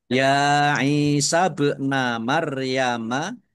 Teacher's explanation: bak sukun bacaan qalqalah ya, dibaca memantul, ditampakkan pantulannya